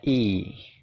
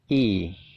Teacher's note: bacanya itu i, nyengir gitu ya, jadi agak panjang. Suaranya adalah i, kayak gitu ya.